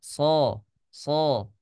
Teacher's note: karena dia adalah huruf yang tebal pasti bibir kita sedikit maju